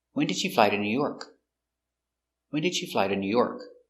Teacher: when it's an information question so the intonation goes down at the end